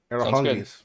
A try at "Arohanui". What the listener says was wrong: I think that G is not pronounced as Arohanui.